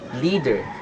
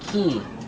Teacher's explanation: First is the E. This vowel is a long sound and tense. Since it is tensed, muscle tension and tongue are needed to produce this sound properly.